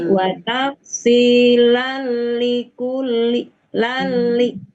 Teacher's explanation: tanwinnya melebur ke lam atau ke ro tapi tanpa gunah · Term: idgham bilaguna